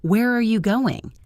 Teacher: A wh dash question like where are you going? Usually has falling intonation. The voice goes down at the end.